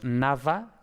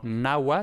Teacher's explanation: también puede fricativizar, es decir, convertirse en una fricativa, en este caso la V